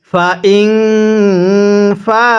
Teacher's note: ফায়ের মধ্যে 4 আলিফ, হামজায়ের মধ্যে 1 আলিফ টান দিবেন।